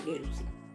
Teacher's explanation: Nutau ante sigma cae y produce el alargamiento compensatorio de la vocal anterior.